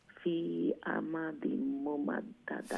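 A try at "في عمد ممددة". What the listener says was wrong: ফি আমাদিম ওখানে গুন্না করবা ফি আমাদিম দিম অমলাগান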